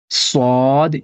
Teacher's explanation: اس کی آواز موٹی ہوتی ہے، سین کی جیسی نہیں ہوتی ہے